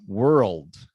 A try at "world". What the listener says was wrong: there you go that's better